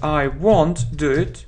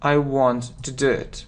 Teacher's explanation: в транскрипции есть разница, что это как O, won't, но на практике так же, как want произносится, поэтому различить практически невозможно